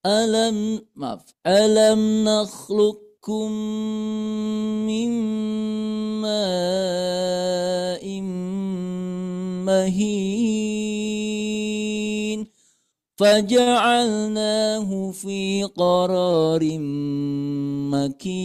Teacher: Jiharkah pertama naik, jiharkah kedua datar.